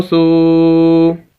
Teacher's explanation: یہ سا کو ہم واو کے ساتھ ملا رہے ہیں، واو ساکن ہے اور یہ واو مدہ بھی ہے، اس وجہ سے ہم اس کو کھینچ رہے ہیں